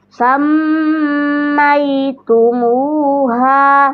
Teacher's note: Ditahan dan didengungnya 2 harokat kadar gunnah. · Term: gunnah musyaddadah